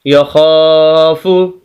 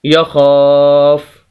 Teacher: وقف کریں گے، فا کو ساکن کر دیں گے، اس کی پیش کو ختم کر دیں گے